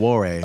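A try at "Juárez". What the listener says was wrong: with a J. with a J. there's no ass in it.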